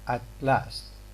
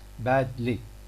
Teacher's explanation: The air which is kept, which is obstructed for the production of t, it goes through the sides of the mouth because of the influence of the lateral sound following it. So t in here, d in here, they have got what we call lateral release realization.